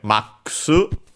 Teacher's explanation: it's the word max from English. The abbreviation, accented on the ma, as expected.